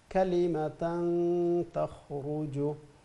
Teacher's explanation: Ra is full mouth, and the Kha as well as full mouth.